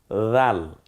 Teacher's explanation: রাল, নরম আওয়াজে, জিব্বার আগা, সামনের দাঁতের আগা